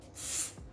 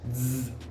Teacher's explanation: un suono è sordo, s, quindi non c'è voce, non usate le corde vocali, l'altro è sonoro, z, quindi si usano le corde vocali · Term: variante sorda